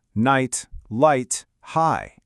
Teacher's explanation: The GH is totally silent, and that I sound is long.